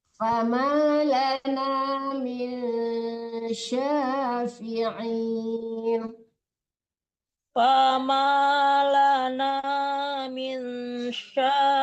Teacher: agak keras membaca shinnya. Jangan sa, tapi sya.